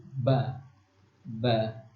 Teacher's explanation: Jadi huruf yang kedua, makhrajatil hurufnya atau tempat keluar hurufnya itu dari bibir. Jadi bibir atas dan bibir bawah itu ketemu